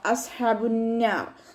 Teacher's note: ഹ തൊണ്ടയുടെ മധ്യഭാഗത്തു നിന്നാണ് സൗണ്ട് വരുന്നത്. സൗണ്ടിന് ഹംസയുടെ സൗണ്ടായി പോവാതെ നോക്കുക കേട്ടോ.